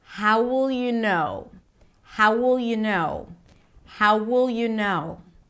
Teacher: An entire phrase, how will you know, is pronounced as if it's one word. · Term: connected speech